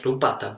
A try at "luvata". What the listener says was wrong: it's not with P. Luvata.